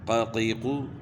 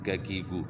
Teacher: قاف جو ہے نا زبان کی جڑ کا وہ حصہ جو گلے کی طرف ہے اس کو اوپر تعلق کے ساتھ لگائیں گے تو موٹا قاف ادا ہوگا